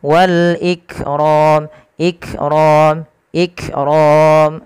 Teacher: Ada dia menyesuaikan dengan sifatnya. Sifat kaf itu ada sifat namanya syiddah. Syiddah itu apa? Tertahannya suara.